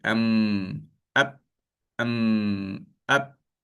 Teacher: Kalau mim dan ba kita rapatkan kedua-dua bibir